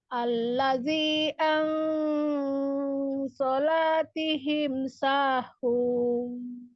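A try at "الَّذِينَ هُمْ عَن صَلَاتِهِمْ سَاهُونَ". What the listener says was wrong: Ya allazina afwan baca allazi. Nanya enggak ada. Allazina. Sahun, angkat sahun.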